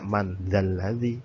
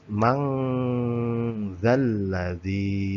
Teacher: Nah, itu kan bacaan aslinya man zalladzi, karena ada hukum bacaan tajwid yaitu berupa eva, maka bacaan ini tidak man zalladzi tapi mang zalladzi. Nah, ini mang ada engnya, mang. Nah, ini mendengung sebanyak 2 sampai 3 harokat